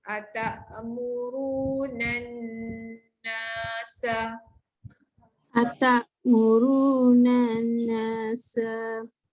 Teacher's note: nun sabdu tu kena dengungkan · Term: wajibuhunah